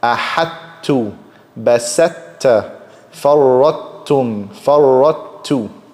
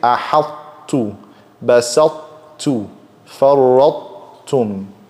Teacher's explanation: Complete merging would sound like this: ahattu, basatta, farrattum, farrattu. I do incomplete merging where I keep some of the fatness or some of the sifa of the ta. So I say ahattu, basattu, farrattum.